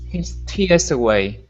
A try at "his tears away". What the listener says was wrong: Good. Nice job.